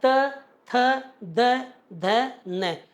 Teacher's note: तय भी दांतों से बोला जाता है